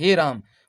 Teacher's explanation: पुलुत स्वर है, 3 मात्राओं का समय लगता है